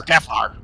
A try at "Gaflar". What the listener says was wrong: You put the emphasis on the wrong syllable.